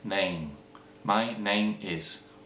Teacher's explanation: an m at the end of a word is converted into an ng sound in a Spanish mind and therefore in pronunciation.